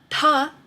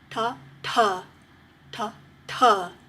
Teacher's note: ta is made in the same place in the mouth as da but it has an aspiration it has a breath